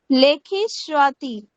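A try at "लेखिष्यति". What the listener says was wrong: স্বাতি কেন বলছেন? শ্যা শ্যা শ্যাতি শ্যাতি। লেখিষ্যতি লেখিষ্যতি। আপনি যে উচ্চারণ করছেন সেটা হচ্ছে মূর্ধন্যের সঙ্গে বকার থাকলে লেখিষ্যতি। বকার তো নেই, উন্তস্ত আছে না, তো আদ্য ইয়া ইয়া ইয়া লেখিষ্যা লেখিষ্যা।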